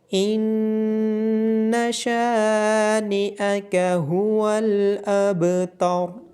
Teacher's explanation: شین کے بعد الف مدہ ہونے کی وجہ سے شین کو لمبا کیا جائے گا، با پہ قلقلہ ہوگا اور را کو موٹا کر کے پڑھا جائے گا۔